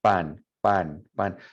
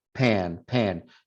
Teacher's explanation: Cuando decimos pan in English, pan, there's more air coming out. And then pan, there should be no air coming out.